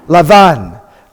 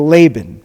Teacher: the Beit without the dot, sounds like V